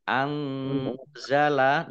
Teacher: nun sukun bertemu dengan huruf za. Ikhfa dibaca samar-samar.